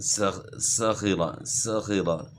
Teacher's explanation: صاخرہ میں سین کی آواز باریک ہو، اور اس میں جو ہے سیٹی کی مثل آواز جو ہے نکلے گی